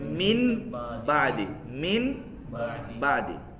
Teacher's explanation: یعنی پھر نون ساکن نہیں پڑھا جاتا، نون کی جگہ پہ میم پڑھا جاتا ہے۔ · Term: اقلاب